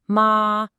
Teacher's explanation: First tone high and flat